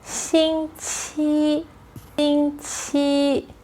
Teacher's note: In mainland China, people use 星期, 星期. Both characters are flat tones, first tone.